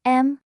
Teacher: The second goes up, like you're asking a question